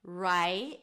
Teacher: So round your lips for the R, change it to an 'ai' as in my